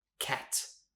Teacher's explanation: Instead of saying cat, you might say gat, gat, almost like a G sound. Please say cat with air, with aspiration, cat, not gat.